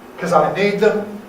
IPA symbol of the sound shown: kəz